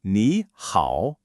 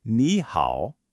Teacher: You hear how it kind of dips down and then goes back up?